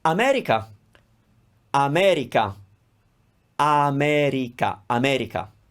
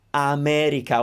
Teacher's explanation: we are pronouncing all the vowels with the same duration